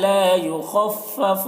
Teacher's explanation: خا کو پر پڑھیں گے کیونکہ خا حروف مستعلیہ میں سے ہے، تو خا کو پر پڑھیں گے۔